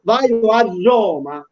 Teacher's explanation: Se io dico vai a Roma, vede che lo pronuncio con 2 R, ma una ne devo scrivere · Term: raddoppiamento fonosintattico